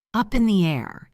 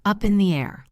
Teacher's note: Let's practice the linking in this phrase. Up in the air, it flows like one word.